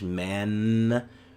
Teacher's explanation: So the final elemental sounds the letter n, which is made, it's called the alveolar nasal, using the tip of the tongue to the alveolar ridge